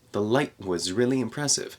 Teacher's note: again we have a glottal stop for the T in light